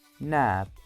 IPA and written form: næp (nap)